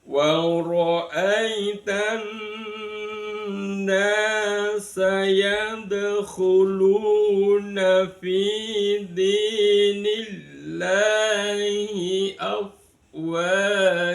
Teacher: Nun itu termasuk harfu Syamsiyah. Makanya alnya tidak terbaca. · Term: idgham Syamsiyah